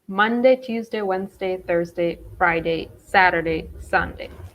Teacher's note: have the stress in the first syllable